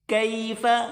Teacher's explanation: یہاں پر چھوٹی کاف اس کو باریک کر کے پڑھیں گے